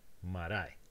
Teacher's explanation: In the word marae, there's only 1 heavy syllable, but it's the last one. However, the rule says that the stress must go on the leftmost heavy, and that one is indeed the leftmost heavy. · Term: leftmost heavy syllable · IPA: [maɾae]